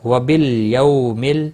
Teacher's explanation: یو واولین ہے، تھوڑا نرمی کے ساتھ کھینچ کر ادا کریں گے۔